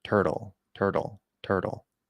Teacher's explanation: it flaps Turtle we get that flap D